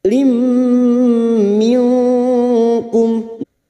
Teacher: kasr tanwin bertemu mim idgham bi gunnah, siap masuk ke huruf mim dan mendengung selama 3 harokat